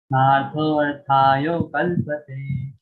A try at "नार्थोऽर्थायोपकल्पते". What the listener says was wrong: योपकल्पते yopa, the pa is missing, Prabhuji. नार्थोऽर्थायोपकल्पते